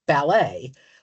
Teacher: Um in in many of the low loan words we have in English from French the American pronunciation has a final syllable stress which is much more like the French like ballet whereas the British English does the earlier si syllables.